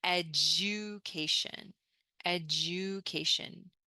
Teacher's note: Notice here, when we have D and U, sometimes it becomes J, J. Education, education.